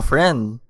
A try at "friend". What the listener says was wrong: Can you stop putting a W on friend?